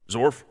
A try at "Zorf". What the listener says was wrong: Zorf with an F.